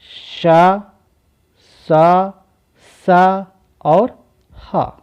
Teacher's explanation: इन चारों वर्णों को हम ऊष्म व्यंजन बोलते हैं, क्योंकि इन चारों को बोलने में जो हमारी प्राण वायु है वो घर्षण करते हुए बाहर निकलती है।